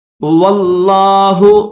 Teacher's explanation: اس طرح ابدم بما قدمت ایدیہم، واللہ، واو کو لفظ اللہ کے ساتھ ملا کر پڑھیں گے، لفظ اللہ کو موٹا کریں گے